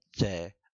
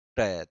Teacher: च में जीव्या थोड़ी नीचे आती है और ट में क्या है? जीव्या ऊपर चली जाती है।